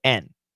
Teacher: When we have and, the word and, the D is almost always silent.